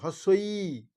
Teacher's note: প্রসারিত মানে ঠোঁট দুটো প্রসারিত হচ্ছে আর এটা উচ্চ সংবৃত্ত মানে জায়গাটা একদম অল্প হয়ে যাচ্ছে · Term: প্রসারিত উচ্চ সংবৃত্ত